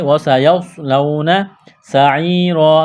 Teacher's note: سین میں سٹی کی آواز پیدا کریں گے، یا ساکن سے پہلے زیر ہے، یا مدہ ہے، الف کے برابر کھینچ کر پڑھنا ہے، وقف کریں گے، دو زبر کی تنوین کو الف سے تبدیل کرنا ہے۔